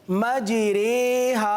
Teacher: صحیح ہے نا، کہ کسی طرف جھکاؤ ہو جانا، اس کو مائل کہتے ہیں. تو زبر کو زیر کی طرف اور الف کو یا کی طرف مائل کر کے پڑھنا یہ امالہ کہلاتا ہے